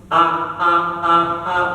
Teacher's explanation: huruf hamzah itu di tenggorokan paling bawah